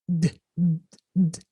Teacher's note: So if it's like, say, ad, you feel like this vibration in your mouth. So it's a voiced letter. They call it voiced in phonology, right?